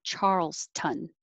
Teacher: it would sound like charles town with a good town but a lot of city names that end with town get shortened to just ton